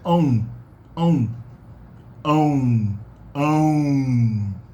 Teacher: it starts with a closed ah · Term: nasal diphthongs